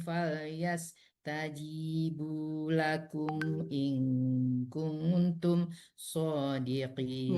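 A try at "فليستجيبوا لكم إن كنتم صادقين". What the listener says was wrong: Ya, sama juga di sini ya, ada dua yang in kuntum. Karena nafasnya tadi sudah berterengah, jadi agak kecepatan ya.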